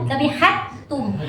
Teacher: Ya langsung tekan. Jadi dalnya hilang. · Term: idgham mutamasilan